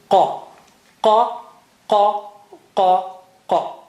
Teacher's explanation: It is from inside edge of the tongue touching behind uvula. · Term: qaf